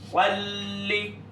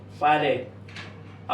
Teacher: جس طرح کہ ہم پڑھتے ہیں اللہم صلی علی، آپ دیکھیں صلی، اب لام کے اوپر تشدید ہے، لام کے اوپر تشدید آ گیا. اصل سل لے، لام ساکن، ساکن دوسری لام متحرک، ساکن کو متحرک میں ڈال دیا، ادغام کر دیا، یہ بن گیا صلی، نہ کہ صالح.